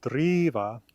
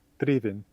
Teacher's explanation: driva, to drive, has a longer E sound than drivin, driven.